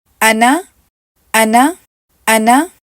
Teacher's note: ان 6 الفاظ کو انشاءاللہ آپ لوگ آگے چل کر سمجھیں گے, لیکن ابھی کے لیے اگر آپ اس لفظ کو دیکھیں تو حمزہ کو ہم ایک ہی کاؤنٹ پڑھیں گے, اس کے علاوہ نون کو بھی ہم ایک ہی کاؤنٹ پڑھیں گے, جبکہ الف یہاں پر سائلنٹ ہے یعنی کہ اس کو ہم نہیں پڑھیں گے